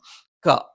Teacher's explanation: നാവിന്റെ ആരംഭം മേലെ അണ്ണാക്കിലാണ്